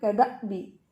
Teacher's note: حمزہ ساکن ہے تو سختی سے پڑھیں گے